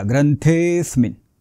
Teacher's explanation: अवग्रह आहे त्या स्वराचा उच्चार लांबट करायचा आहे बघा इथे हा हा जो अवग्रह आहे तो ए या स्वरावर आहे म्हणून ए चा उच्चार थोडासा लांबट करायचा · ज्या स्वरावर हे अवग्रह आहे त्या स्वराचा उच्चार लांबट करायचा आहे बघा इथे हा हा जो अवग्रह आहे तो ए या स्वरावर